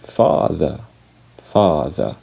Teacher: The R sound is not pronounced. The final R is not pronounced.